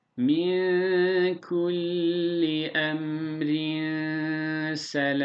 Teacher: Burada vasıl yaparsak ra ince aynı zamanda ihfa yapıyoruz.